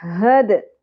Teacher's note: हद दाल साकिन पे कलकला